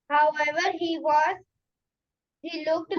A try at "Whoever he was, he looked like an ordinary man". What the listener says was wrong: Whoever, not however. Beta, it is not however. Whoever he was.